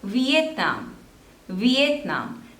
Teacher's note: there are three syllables and the stress is on the third one